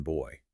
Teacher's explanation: They're both what linguists call bilabial plosives. You make the sound with your 2 lips.